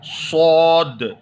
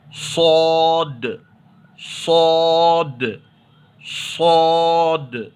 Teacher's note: صاد کا مخرج جیسے ہم نے سین زا کو ادا کیا تھا وہی مخرج ہے، یعنی تھوڑا منہ کو کیا کریں گے، تھوڑا گول کریں گے، تھوڑا سا منہ کو گول کر کے اس کی آواز کو پر پڑھنا چاہیے، پر یعنی موٹا پڑھنا چاہیے